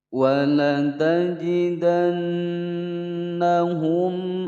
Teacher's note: Wala tajida, pendek semua, kemudian langsung masuk ke huruf nun bertasydid, ditekan ditahan 2 ketukan